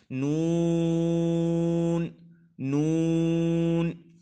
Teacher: تو وہاں سے لے کر ثنایا تک جو ادا ہوگا وہاں پر، یعنی زبان کا کنارہ جو لگے گا تو وہاں نون ادا ہوگا، ٹھیک ہے۔ انیاب سے ثنایا تک کے دانتوں کی جڑوں سے نون ادا ہوتا ہے